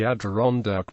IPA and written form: ædᵻˈrɒndæk (Adirondack)